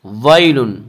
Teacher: یا لین وہ یا جو ساکن ہو اور اس سے پہلے زبر ہو، یا لین کو نرم آواز کے ساتھ پڑھیں گے